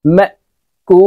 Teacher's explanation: মদর হরফের বামের হরফে ওয়াকফ আসছে মুদ্দা আরজি তাই আমরা তিন আলিফ টেনে বলবো